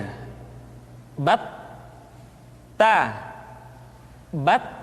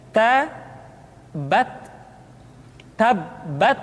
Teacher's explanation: huruf t ketika diucapkan terdengar ada nafas yang mengalir atau dalam ilmu tajwid disebut dengan sifat Al hananah pertikaian ta